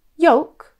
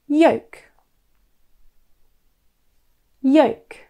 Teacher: As you can imagine, this word confuses many students as it's not spelt phonetically. The L is actually silent and the word should rhyme with the word woke.